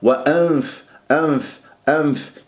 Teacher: إذا طبقت تخنق الغنة صارت كأنه ميم، وأم وأم خطأ، وأنف أنف أنف، دائما قول أنف أنف أنف أنف أنف، أنطي مجال.